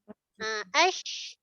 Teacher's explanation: Shin ada hemburan suara. Okey, hemburan. Suara yang berhembur.